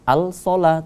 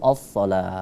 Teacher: Kemudian situ ada alif lam syamsiyah. As-shalah, tidak kita baca al-shalah tapi as-shalah, langsung melebur ke huruf sha